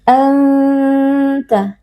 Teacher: ikhfa Hakiki karena ada nun sukun yang bertemu dengan huruf ta cara membacanya adalah dibaca dengan dengung yang disamarkan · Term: ikhfa haqiqi